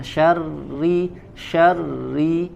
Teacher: huruf ra sukun Huruf ra kasroh ya ditipiskan suaranya